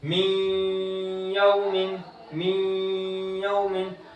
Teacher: नून साकिन के बाद या आ रहा है तो इदगाम हुआ, ठीक है। तो फिर अब यहाँ पर गुन्ना करके पढ़ेंगे